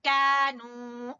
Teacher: बारीक काफ और अलिफ मद्दा और नू वाव मद्दा